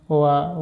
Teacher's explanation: दांतों की सहायता और दोस्तों होठों की सहायता लेनी पड़ती है